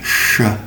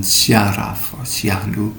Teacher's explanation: Sh, you round your lips. So it's opposed to the Indonesian sya sound, as in syaraf or syahdu, where you spread your lips, sya. And you can practice with a simple sentence. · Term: sh sound